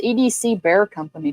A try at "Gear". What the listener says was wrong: Gear. That's a G. EDC Gear Co.